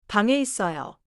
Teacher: 방에 keeps the nasal sound and connects it smoothly to the next vowel. · The final, 이응, connects smoothly before 에.